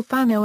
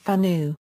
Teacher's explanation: the o sound at the end of words instead of the final U common in all other forms of Malian for example Fano instead